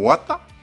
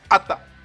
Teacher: le mot wata changeait de sens quand la voyelle mouillée A était glottalisée